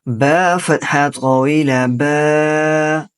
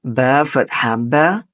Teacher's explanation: And standing fatha is read just like simple fatha but a little bit long.